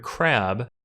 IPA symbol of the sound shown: æ